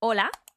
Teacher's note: the H is not pronounced when it is at the beginning of a word or when it is between vowels.